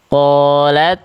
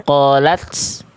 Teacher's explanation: Tapi ta itu sifatnya namanya adalah hams. Terpercik nafas.